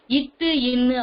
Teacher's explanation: இட்டு இன்னு ஆகிய 2 மெய்களும் நாவின் நுனி அன்னத்தின் நுனியை பொருந்துவதால் பிறக்கின்றன